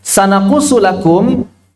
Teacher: Sanaqusu lakum itu adalah mad lazim, harfi 6 harakat.